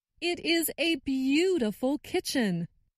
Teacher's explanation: I noticed that stressed the word beautiful